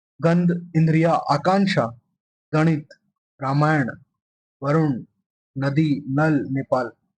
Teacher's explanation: उच्चारण के दौरान हवा नाक के माध्यम से बाहर आती है